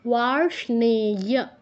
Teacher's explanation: মূর্ধন্যর সাথে মূর্ধন্য যুক্ত আছে, উচ্চারণ শুনে যেন সেটা বোঝা যায়।